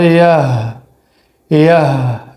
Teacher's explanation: یا ہا زبر یہ، یاد رکھیے کہ یہ جو ہا ہے اس کو کہا جاتا ہے چشمے والی ہا، یعنی چھوٹی ہا بھی کہتے ہیں اس کو اور چشمے والی ہا بھی کہتے ہیں اس کو۔ یہاں پر جو ہے ہا کا آواز حلق سے آنا چاہیے لیکن بالکل نرمی کے ساتھ، دباؤ نہیں ہو۔